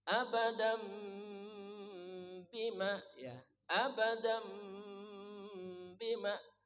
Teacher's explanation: Abadan suara tanwin n ditukar dirubah menjadi ada abadam. Kedua mulutnya rapat beserta dengung. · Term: Iqlab